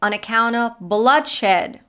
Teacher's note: bloodshed which she pronounces very clearly and stresses at going higher in pitch